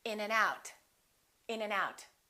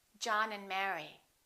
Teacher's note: we reduce the A and the D. Those disappear often.